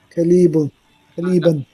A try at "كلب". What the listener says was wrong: هذا كلب. There is no ياء.